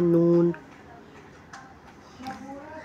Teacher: मीम दोनों होठों के तली वाले हिस्से को मिलाकर जुदा करने से अदा होता है मीम। नून दोनों ज़बान की नोक को इब्तिदाई तालू से लगाकर अदा होता है नून